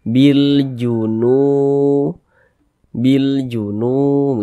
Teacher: Ada huruf waw, ada tanda sukun, sebelumnya ada tanda baca dhammah. Nah, huruf yang memiliki tanda baca dhammah ini dibaca panjang, sehingga nu dibaca panjang. Bil junu dipanjangkan. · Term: mad tabi'i